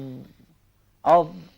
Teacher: Istillalak mesti huruf ni ditebalkan. Mesti huruf ni berbunyi besar, gemuk. Kalau tak digemukkan dia, dia bunyi jadi zal jadi tipis pula. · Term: istialak